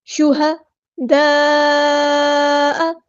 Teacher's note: مد آ گئی ہے، کنیکٹڈ مد، 4 یا 5 کاؤنٹ میں اس کو لمبا کرنا ہے